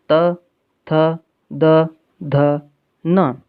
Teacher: दंताः यानी दांत से बोले जाने वाले वर्ण, जिह्वा दंत को स्पर्श करेगी। · ये सभी दंतव्य है यानी दांत से बोले जाते हैं।